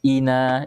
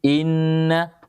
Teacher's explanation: Bahwa Nun dan mim bertasydid itu lebih panjang daripada dua harakat pada hukum Mad